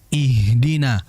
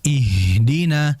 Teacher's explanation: Ha itu mengalir sama seperti sin. Alirannya cukup lama. Ihdina. Karena kalau kita istilahkan ha ini ya seperti kalau kita kelelahan dalam olahraga.